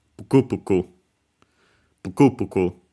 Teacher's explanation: But actually, most likely it's simply because the first having unvoiced consonants, in this case, the first U of the pu is barely heard, if at all. And so yeah, since some keep it, but usually you move the accent, you don't keep the accent on syllables where the vowel is barely heard, if at all, then the accent moves to the closest one.